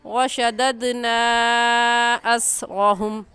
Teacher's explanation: रा के ऊपर ज़बर है तो रा को पुर यानी मोटा करके पढ़ेंगे। और सीन सीटी वाले हरूफ में से सीटी निकाल कर ऐसे पढ़ेंगे अस्रहुम व शददना अस्रहुम।